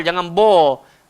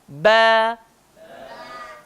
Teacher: Cara sebut ba hanya melibatkan bibir dan dia tak tebal.